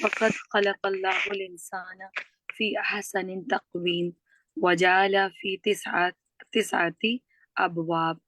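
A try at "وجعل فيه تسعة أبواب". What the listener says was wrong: وجعلہ کے بعد والا لفظ پڑھیے. ہاں، فیہ تسعۃ ابواب. ٹھیک ہے، مجھے یہ مسنگ لگا، ہو سکتا ہے بولا ہو، مجھے سمجھ نہ آیا ہو سننے میں.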